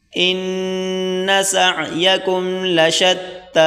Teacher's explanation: حمزہ نون زیر ان، نون زبر نا، سین عین زبر سع، سین اور عین آپس میں ملا کر پڑھیں گے، عین کو گلے سے نکالیں زور لگا کر